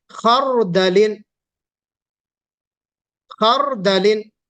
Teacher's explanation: اس را کو ہم موٹا پڑھیں گے